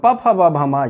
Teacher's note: और हमारा जो वर्ग है वो पवर्ग है। मतलब ओष्ठ से पवर्ग, प फ ब भ म, ये ओष्ठ से बोले जाते हैं।